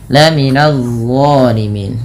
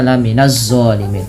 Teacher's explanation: Nah, ini dha jangan dibaca la minaz zalimin, tapi dia dha, pangkal lidah terangkat, ujung lidah menempel dengan gigi di atas